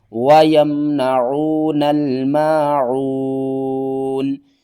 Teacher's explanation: الذین هم یراؤون وَيَمْنَعُونَ الْمَاعُونَ، واو زبر وا، یا میم زبر یم، وَيَم، نون زبرنا، وَيَمْنَ، عین واو پیش عو، وَيَمْنَعُ، نون لام زبر نل، وَيَمْنَعُونَ، میم الف زبر ما، عین واو پیش عو، ماعو، نون زبرنا، ماعون، وقف کی صورت میں نون کو ساکن کریں گے